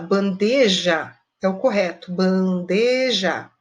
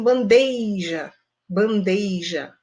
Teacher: Essa colocação de um i no local que não existe é uma colocação incorreta